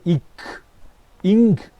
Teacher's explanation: சுவாசப்பையிலிருந்து வருகின்ற காற்றை பேச்சுறுப்புக்கள் தடை செய்து இந்த கடை நாவும் கடை அன்னமும் பொருந்த பிறப்பது கடை அன்ன ஒலிகள் என்று சொல்லுவோம்